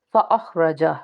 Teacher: فَأَخْرَجَ، پہ حلقی کا حرف ایک تو ہے، یعنی کہ اس کو ہم حلق کے اوپر والے حصے سے ادا کریں گے، اور دوسرا یہ حرف مصالحہ کا حرف ہے، اس کو پر پڑھیں گے۔